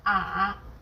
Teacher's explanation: The third tone goes down from a low pitch then rises to the middle of the pitch range.